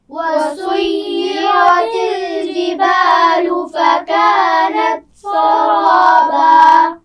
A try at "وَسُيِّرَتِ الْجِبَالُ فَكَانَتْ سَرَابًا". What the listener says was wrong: سین کو باریک پڑھنا ہے. وَسُيِّرَتِ الْجِبَالُ جیم کا مخرج واضح کیجئے. دوبارہ پڑھیے.